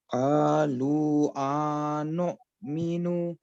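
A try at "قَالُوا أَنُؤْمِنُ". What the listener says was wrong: انو، آ لمبا نہیں کرنا آپ نے. انؤمنو.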